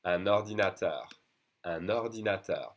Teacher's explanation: blending the words together, the last silent consonant to the next vowel, like in the previous slide, we do make the liaison.